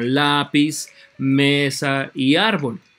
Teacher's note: llevan el acento en la penúltima sílaba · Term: graves